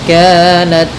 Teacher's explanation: dalam ta sedikit dikasih hamas karena sifat ta ketika sukun itu tampak hamasnya